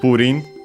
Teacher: accented on the first syllable as expected